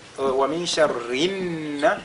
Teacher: nous avons le nun qui est mushaddada. On fait donc la liaison entre le ri et ce nun